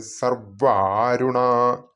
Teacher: വ ശ്രദ്ധിക്കണം വെറും വയ അല്ല വെറും വ അല്ല ദിത്വമാണ് അവിടെ അപ്പോൊ മുകളിലത്തെ പല്ലുകൾ കീഴ്ചുണ്ടിൽ അമർത്തി ഇട്ടാണ് ഈ വ ഉച്ചരിക്കേണ്ടത് സർവ്വ ആരുണാ സർവ്വരുണ എന്ന് ചൊല്ലി പോകരുത് അരുണാ എന്ന് തന്നെ കേൾക്കണം കാരണം